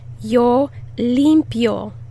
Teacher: the emphasis on the first syllable